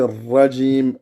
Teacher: le ra, ça doit être un ra qui est roulé, comme en espagnol